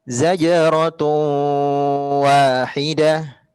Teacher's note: Tapi yang kurang tepat dikata zajratun wahidah. Di situ ada tanwin, kata tun bertemu dengan huruf waw, hukumnya idgham bi gunnah. Jadi harus didengungkan Bunda.